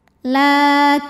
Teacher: Maka cara bacanya alif lam tidak perlu dibaca atau diidghamkan. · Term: alif lam syamsiyah